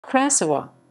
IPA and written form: kraˈsɔva (Krasowa)